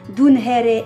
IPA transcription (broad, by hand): dunhɛrɛ